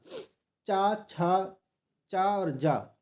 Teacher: चा और जा ये दोनों तालव्य हैं